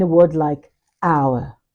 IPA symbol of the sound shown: aʊə